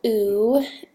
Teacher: a high a back vowel that is also rounded this means our tongue is high toward our palate and in the back of our oral cavity and additionally our lips are rounded or protruded forward